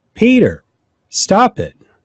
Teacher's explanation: the second one is definitely louder and higher pitch